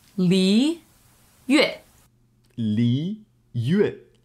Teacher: Slowing that down a little, that is second tone and then fourth tone